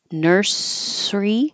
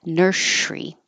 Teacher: of practice with s's this word can be pronounced two ways you can keep the pure s Nursey or you can make it the sh nursy